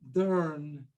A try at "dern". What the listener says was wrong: So hold on to the dern. I hear you kind of slipping away from it, but it's a real purple ending. So it's is the stress.